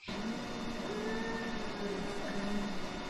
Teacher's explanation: it is a very pressed voice without any regular vibration